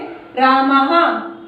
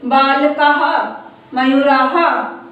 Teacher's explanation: विसर्ग का उच्चारण हा की तरह होता है, जैसे रामः, हा की आवाज निकल रही है।